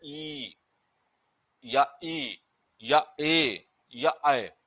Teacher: जो आपका जीभ का अगला भाग है वह दांत के नीचे वाले हिस्से में लगा रह जाता है